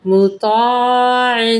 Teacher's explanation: تو کو پر کریے گا، عین کو بھی پڑھیے گا صحیح